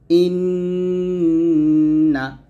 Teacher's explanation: ইন একটু ধরে রাখলেন জিহ্বাটা উপরের তালুতে ধরে রাখলেন ইন এটা হচ্ছে গুন্না আর গুন্নাটা মূলত এক এক আলিফ পরিমাণ টেনে পড়তে হয় ইন্